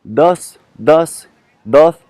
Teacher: le son du D tel qu'il le prononce en espagnol bah c'est proche du the ou the en anglais c'està-dire c'est vraiment c'est sur le bout de la langue